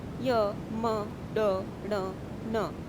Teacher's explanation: हम इनका उच्चारण नाक के द्वारा कर रहे हैं, ध्वनि नाक से आ रही है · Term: नासिका